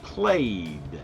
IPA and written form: pleɪd (played)